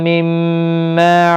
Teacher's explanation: میم ساکن کے بعد دوسرا میم آیا ہے، ادغام شفوی ہوگا، غنہ کے ساتھ پڑھیں گے۔